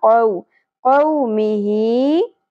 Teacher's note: वाव साकिन से पहले जबर हरफ लीन है, नरमी सदा होगा